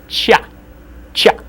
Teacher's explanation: in Russian it's always soft, so it'll always sound as cha